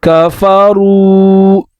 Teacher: را کو پر پڑھیں گے اور واو مدہ ادا کریں گے